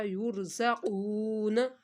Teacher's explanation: تو یہاں بھی را کو ہم نے موٹا پڑھا، ترجیعون، یرزقون، را ساکن اس سے پہلے پیش ہے تو را کو بھی موٹا